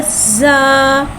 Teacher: ज़ा को एक अलिफ यानी दो हरकत के बराबर खींच के पढ़ेंगे। ज़ा में सिटी को ज़ाहिर करके पढ़ेंगे। ज़ा के ऊपर ज़बर है, ज़बर को मुँह खोल के अदा करके पढ़ेंगे।